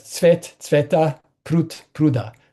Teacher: So coda devoicing, D to T at the end of the word